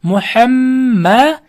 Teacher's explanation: Keyin bu yerda muham sukunlik mim harfidan so'ng yana bitta mim harf kelib qolsa, ikkita mimni birlashtirib g'unna bilan o'qiymiz. Muhamma, shuncha mana g'unnali idg'om mislayn deydi.